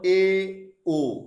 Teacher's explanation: যেমন এ ও, হস্যই হস্যু উচ্চারণ করতে গেলে আমাদের মুখটা যতটা না ফাঁকা ছিল, এ ও উচ্চারণ করতে গিয়ে আমাদের মুখটা কিন্তু একটু বেশি ফাঁকা হচ্ছে, 1/3 ফাঁকা হয়ে যাচ্ছে সংবৃতের তুলনায়। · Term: অর্ধ সংবৃত স্বরধ্বনি